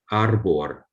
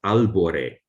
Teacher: But if you have two of them in the same word, speakers don't seem to like it. So in Italian, it becomes albore, with the first R becoming L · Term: dissimilation